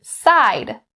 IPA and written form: saɪd (side)